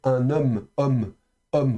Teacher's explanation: Vous voyez, il y a il y a une espèce de petit arrêt avant la prononciation. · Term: coup de glotte